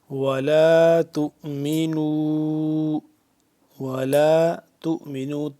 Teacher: ولا تؤمنوا، ولا تؤمنوا، تا حمزہ پیش تو، یہ واو ہے جو واو نہیں پڑھا جا رہا، واو کے اوپر جو حمزہ نظر آ رہا ہے آپ کو تا حمزہ کے ساتھ مل رہا ہے، ٹھیک ہے۔ تا حمزہ پیش تو تھوڑا سا جھٹکا دیں گے، میم زیر می، تو می، نون واو مد پیش نو، مد ہے چھوٹی سی مد ہے تو اس پہ ہم کیا کریں گے، 2 سے 3 الف کے برابر اس کو لمبا کریں گے۔